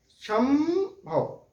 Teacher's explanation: सम संभव संभव, मुंह देखिए बंद हो जा रहा है। जब ये अनुस्वार का उच्चारण कर रहे हैं हम तो मुंह हमारा बंद हो जा रहा है, नाक से आवाज निकल रही है। संभव शम, समझ में आ रही है बात कि मुंह से आवाज उस वक्त नहीं निकल रही है, नाक से निकल रही है।